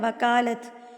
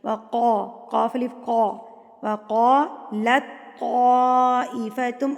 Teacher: یہ وقا جو ہے ہم نے اس کو پر کر کے پڑھنا ہے کیونکہ یہ موٹا قاف ہے۔ جب آپ اس کو وقا پڑھیں گے نا، وکالت، تو جب اس کو آپ باریک کاف کے ساتھ پڑھیں گے تو یہ معنی بدل جائے گا، تو یہ حرام غلطی میں شمار ہوتا ہے، اس لیے احتیاط کرنی چاہیے۔